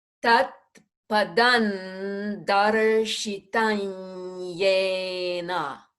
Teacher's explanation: the first M will change to an N with the tip of the tongue at the teeth so that it moves smoothly into the D of darshitam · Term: anusvara marks